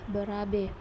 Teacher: Tengah atas tak bundar apabila berada pada silabel terbuka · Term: fonem E